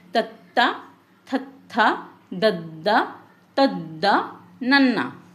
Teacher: ਜੀਭ ਦੰਦਾਂ ਦੇ ਹੇਠਲੇ ਪਾਸੇ ਛੂੰਦੀ ਹੈ। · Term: ਦੰਤੀ